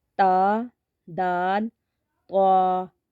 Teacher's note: कहते हैं क्योंकि यह जुबान की नोक से अदा होते हैं जुबान की नोक और ऊपर के दांतों की जड़ से अदा होते हैं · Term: हरूफ नतिया